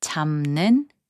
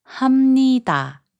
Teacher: When the final consonant 비읍 is placed before 니은 or 미음, its sound changes to 미음